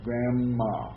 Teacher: how much longer the N is in grandma because there's two of them